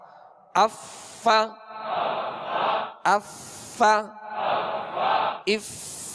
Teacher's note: है और इसका मखर है ऊपर के माशाल्लाह ऊपर के दांत ऊपर के दांतों के किनारे और निचले होठ का तर हिस्सा यह मखर है फा का